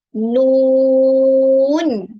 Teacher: kena panjang sebanyak 6 harokat pada suku kata yang pertama. Jadi kita nak baca panjang 6 harokat sebab huruf ni ada ombak.